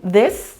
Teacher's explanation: putting our tongue between the teeth and pushing air outside